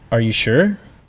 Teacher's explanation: Sure has a rising tone